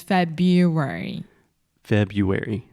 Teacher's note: naturally but February is a very strange word because there are there's that R right after Feb but we do not pronounce that